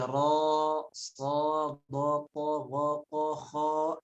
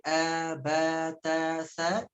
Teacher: huruf fathah dari 29 huruf hijaiyah itu sebagian besarnya dibaca tipis, kecuali huruf-huruf yang dibaca o, seperti ro, so, do, po, go, po, ho, itu yang dibaca o semuanya tebal, ya. Ketika diberikan harokat fathah dibaca o tebal, tapi yang dibaca a sempurna dari mulai a, ba, ta, sa itu dibacanya tipis.